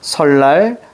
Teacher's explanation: 비음인 니은이 앞뒤 오는 리을의 영향을 받아서 리을로 바뀌어요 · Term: 유음화